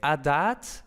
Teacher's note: Luego tenemos en védico adat, entonces otra vez tenemos la A larga a causa de la laringal